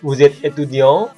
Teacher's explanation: kita menaikkan intonasi dengan kalimat yang sama seperti afirmatif